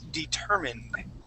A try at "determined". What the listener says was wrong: Okay, we're going to end with a D.